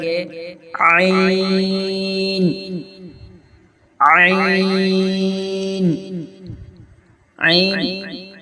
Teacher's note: حلق کے بیچ والے حصے سے ادا ہوتا ہے